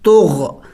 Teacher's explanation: دیکھیں سکون ہے، ہم نے جم کر کے پڑھنا ہوگا طغ. اور غین چونکہ حروف حلقے میں سے ہے اور حلق کے اگلے حصے سے ادا ہوگا